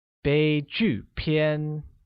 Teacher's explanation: pronounced using a high level tone on E, a falling tone on U, and a high level tone on A. Once again, it's 悲剧片.